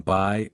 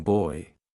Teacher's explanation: these are vowels that start in one position and glide into another like the AI in by or the oi in boy diff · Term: diff thongs